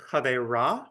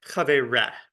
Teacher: So instead of chavera with an a vowel, it's chavere with an e vowel.